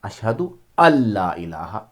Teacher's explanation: یہاں الف کو یعنی حمزہ کو لام میں ملائیں گے